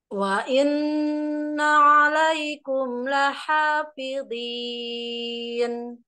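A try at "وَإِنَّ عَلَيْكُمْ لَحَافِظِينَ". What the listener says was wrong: Ya, tebal lagi huruf dha-nya. Kemudian huruf lidah, bibir tidak tidak ikut bergerak ya. Wa inna 'alaikum lahafidhin.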